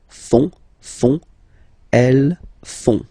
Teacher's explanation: And ils, plural, font, final T not pronounced